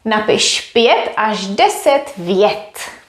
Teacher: až as well as už is pronounced with sh at the end